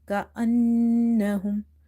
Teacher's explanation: We have to hold this noon sound in order to pronounce gunna.